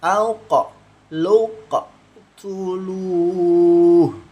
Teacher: Jadi harus dipantulkan, jangan jangan dialirkan, karena qaf ini sifatnya dipantul, apalagi ini sukun ya.